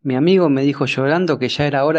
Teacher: rehilado hace referencia a la fricción fonética con la que se pronuncia en un fenómeno hoy en día conocido como sheísmo, ya que presenta un sonido más similar al de la SH del inglés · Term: yeísmo rehilado